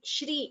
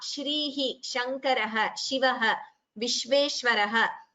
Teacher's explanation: In some languages, I think like Telugu, the sha is pronounced as sa or something like that. But in Sanskritam, it is sha.